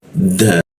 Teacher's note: da menggunakan ujung lidah tempelkan ke gigi